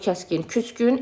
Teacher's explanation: İki dənə kar samit yanaşı gəlir. İkincisi cingiləyə keçir.